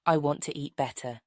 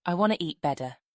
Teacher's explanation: practice saying it with a clear T sound I want to eat better then try saying it with a more relaxed American style flap